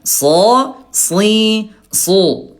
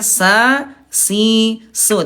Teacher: Huruf sod dia tebal dalam kondisi apapun dan sin dia tetap tipis dalam kondisi apapun.